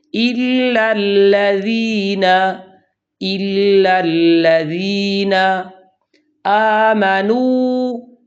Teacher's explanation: یہاں پر ذال ہے جس کا مخرج زبان کی نوک سامنے والے دو دانتوں کے کنارے ہیں، اس کو نرمی سے ادا کرنا ہے